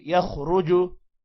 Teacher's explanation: خا اور را کو موٹا پڑھیں گے